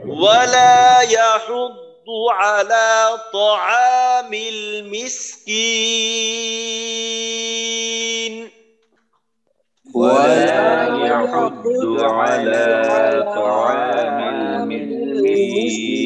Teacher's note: আওয়াজ বের করব পরিপূর্ণ তিন আলিফ বা এক আলিফ যতটুক টানি টান শেষ হওয়ার পরে আওয়াজটা নাকে গিয়ে নুনের আওয়াজটা বের হবে